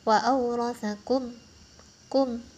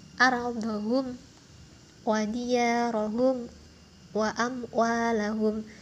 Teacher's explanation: jadi jelas ya teman-teman, terang, nggak ada dengung-dengungnya sama sekali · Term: idhar safawi